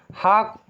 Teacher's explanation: हा का उच्चारण स्थान जो है वो है स्वर यंत्र। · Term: स्वर यंत्रीय